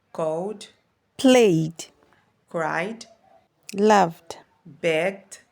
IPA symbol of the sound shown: d